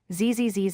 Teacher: For the Z sound, your vocal cords vibrate, creating a buzz or hum in your throat.